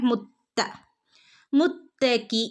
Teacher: മുത്ത താന്റെ മുകളിൽ ശ്രദ്ധയുണ്ട് ഒന്ന് കട്ടി കൂട്ടി കൊടുക്കുക